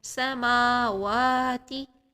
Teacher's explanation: ما اور وا دونوں کو 2 سیکنڈ ایک جیسا پڑھنا ہے۔ سماواتی نہیں کرنا ہے، سماواتی کریں گے میم کی حرکت، میم کی کاؤنٹس ڈراپ ہو جائیں گی، تو میم کو آپ نے میم کو بھی 2 سیکنڈ پڑھنا ہے اور واو کو بھی 2 سیکنڈ پڑھنا ہے۔ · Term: مد